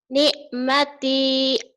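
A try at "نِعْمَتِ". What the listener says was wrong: nah gitu ya cuman ainnya belum keluar ni'mati Ni'mati, ni'mati gitu.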